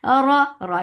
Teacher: Ra is heavy for fatha open jaws. The sound is short.